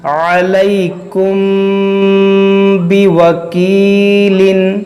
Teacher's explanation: میم ساکن کے بعد با ہے تو یہاں پر اخفاء شفوی ہوگا